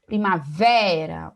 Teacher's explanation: Primavera, o vé, né, a sílaba mais forte. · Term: sílaba tônica